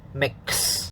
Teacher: the x sound is actually a ks sound